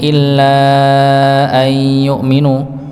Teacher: Illa di sini panjang sama 4 atau 5 harokat, ada benderanya.